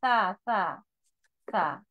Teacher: সা পড়বে আলিফ বা তা সা, কিন্তু এটা সা না, এটা হলো সা। সা জিহ্বার আগা উপরের পাটির সামনে দুই দাঁতের কিনারাতে লাগিয়ে পড়তে হবে